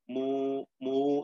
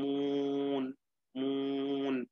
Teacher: ഖൈശൂമ് അതിൽ സ്വാധീനിക്കുക, ഉന്നത്തിന്റെ കലർപ്പ് അതിൽ ഉണ്ടാവുക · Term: ഗുന്നത്ത്, മൂക്ക് ചേരുക